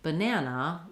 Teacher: in a word like banana, we have 3 letter A's, and we say the A vowel on the middle syllable. That's a syllable that has the syllable stress · the 2 letter A's in banana that don't say the A sound are the unstressed syllables, and they have vowel schwa